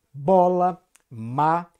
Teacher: quando juntamos o lábio superior com o lábio inferior, produzimos um som consonantal que chamamos de bilabial, como em bola, má. · a interrupção da passagem de ar se dá pelos dois lábios, portanto, bilabial